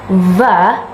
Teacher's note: And if you want to say va, like is in the word village, your lower lip is under the upper teeth. Village.